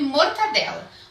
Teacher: Mortadela não é um som nasal. Então, não é adequado eu falar mortandela. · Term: nasalização